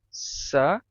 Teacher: Depois o C cedilha perdeu esse sonzinho de T, ele não ficou mais tsa, ele ficou sa, mas ainda ficou diferente do SS, porque o SS era meio chiado e o C cedilha não.